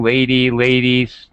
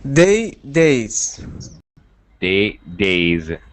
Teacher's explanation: it ends with a vowel so it's pronounced as with a z sound